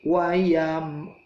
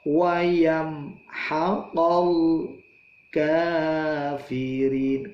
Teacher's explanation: mati ketemu hak idhar syafawi wayam seperti biasa mad syafawi itu mim langsung lepas bibirnya